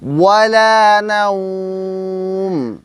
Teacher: ওয়ালা বলার সময় যখন আপনি ওয়াওয়ের উচ্চারণ করবেন তখন মুখ, ঠোঁট গোল করবেন। যত বেশি গোল করবেন আপনার উচ্চারণটা তত শুদ্ধ হবে।